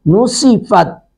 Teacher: تا ساکن پہ قلقلہ نہیں ہونے دیتے، یعنی اس کی آواز لوٹ کے نہیں آئے گی